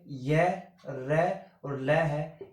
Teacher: र बोला जाता है मूर्धन्य से, ल बोला जाता है दंते से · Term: अंतस्थ व्यंजन